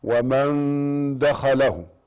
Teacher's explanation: نون ساكنة وجاء بعدها الدال فيسمى إخفاء حقيقي